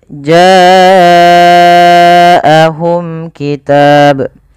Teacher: Pada lafal bacaan ja'ahum ini wajib kita panjangkan sepanjang 4 atau 5 harakat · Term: mad wajib muttasil